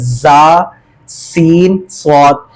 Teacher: اس کے پڑھنے میں سیٹی جیسی آواز آتی ہے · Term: سیٹی والے